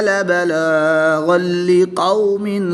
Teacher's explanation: دو زبر کی تنوین کے بعد لام حروف یرملون میں سے ہے تو یہاں پر ادغام بلا غنہ ہوگا، یعنی غنہ نہیں کریں گے